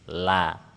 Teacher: Huruf lam makhrajnya di ujung lidah ada di langit-langit depan.